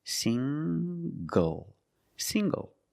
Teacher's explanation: The ng makes the nasal sound plus the hard G.